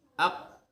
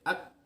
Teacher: kalau qaf dia agak mundur dikit. Kalau kaf itu dimajukan agak depan.